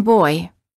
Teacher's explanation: the lips move from a slightly rounded oval position to a relaxed slightly parted position